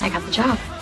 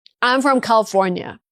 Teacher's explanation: Then you have falling intonation. This shows completion and confidence.